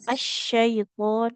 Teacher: Huruf syin ya. tengah lidahnya ke langit-langit atas.